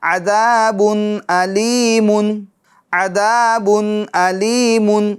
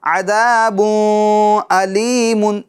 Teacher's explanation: اظہار کرنا ہے، یعنی نون ساکن کا تنوین کا اظہار کرنا ہے، گننا نہیں کرنا